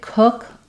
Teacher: When I say cook, you can still see some lip rounding there.